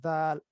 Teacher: یہاں پر زبان کی نوک اوپر والے دو دانتوں کے سرے کے ساتھ ملے گی تو دال یہ ادا ہوگی. اس میں بھی زبان تھوڑی سی باہر نکل سکتی ہے، دال.